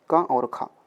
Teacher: का वर्ग का प्रत्येक जो वर्ण होगा वो कहाँ से बोला जाएगा, कंठ से बोला जाएगा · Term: कंठ ध्वनियाँ